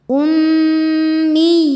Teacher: ya tasdid kasrah bertemu Ya Sukun maka dibacanya panjang dua harakat · Huruf ra dibaca secara tafkhim karena berharokat fathah. Cara bacanya ditebalkan. Rasu su mad tabi'i zahiri sebab ada waw sukun sebelumnya berharokat dhammah. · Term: Mad tamkin